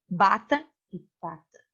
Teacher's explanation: Então, você fala bata e pata. Veja que o P, ele é entre os lábios, ele é mais suave.